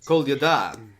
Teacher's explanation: if you put the stress on the last syllable, you'll pronounce it right.